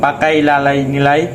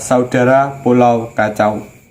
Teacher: sering dibedakan menurut perbedaannya yaitu satu diftong naik piston naik adalah vokal yang kedua diucapkan dengan posisi lidah lebih tinggi dari yang pertama posisi Liga semakin menaik sehingga strukturnya semakin tertutup pedas berdasarkan posisi